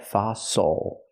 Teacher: the stress is on the first syllable the second symol is not stressed so it's oo like muscle